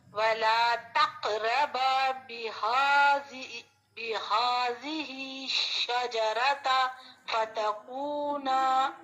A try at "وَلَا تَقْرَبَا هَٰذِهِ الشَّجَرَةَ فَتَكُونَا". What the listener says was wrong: یہ جو ہے نا تقرب، اس کے ساتھ کوئی بھی با نہیں ہے ایکسٹرا، جو بھی ہاز آ پڑھے ہم، یہ ہے وَلَا تَقْرَبَا هَذِهِ الشَّجَرَةَ فَتَكُونَا.